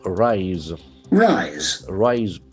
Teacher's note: The pronunciation for the letter S is very prominent. It is Z.